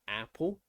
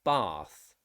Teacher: we have two short vowel a sounds that is a like in a apple or ah like in bath